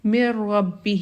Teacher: نون کی کوئی بھی صفت باقی نہیں رہے گی، اور نون کی نہ تو آواز آئے گی نہ اس کا اظہار ہوگا، بلکہ ہم ڈائریکٹلی میم کو جوائن کر دیتے ہیں را کے ساتھ۔